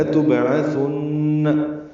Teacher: با ساکن پہ قلقلہ ہے، عین وسط حلق سے ادا ہوگا، ثا نرمی سے پڑھیں گے اور نون مشدد پہ غنہ ہوگا.